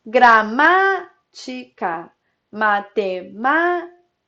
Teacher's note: a antepenúltima sílaba é a mais forte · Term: proparoxítona